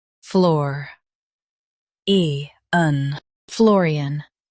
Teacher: Stress the floor part and keep e-an light.